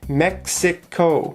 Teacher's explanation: Mexico has three syllables Mexico the stress is on the first syllable